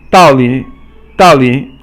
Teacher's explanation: Dao Li, and I always thought it was, I thought it was pronounced fourth tone, 四 声, and then 三 声, but it's actually pronounced 四 声 and then 轻 声